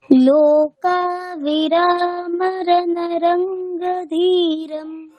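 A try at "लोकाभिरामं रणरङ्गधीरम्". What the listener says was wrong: আচ্ছা, তুমি অনুস্বারটাকে মিস করছো। হ্যাঁ, রামম, ওখানে অনুস্বারটাকে আমরা ম বলছি, রামম। লোকাভিরামম রণরঙ্গধীরম, তুমি অনুস্বারগুলোকে মিস করছো। হ্যাঁ, ওটাকে বলতে হবে, ম বলতে হবে।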